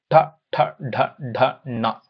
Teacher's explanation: ತಾಲುವಿನ ಮೇಲ್ಭಾಗದ ಸಹಾಯದಿಂದ ಹುಟ್ಟುವ ಅಕ್ಷರಗಳನ್ನ ಮೂರ್ಧನ್ಯಾಕ್ಷರಗಳು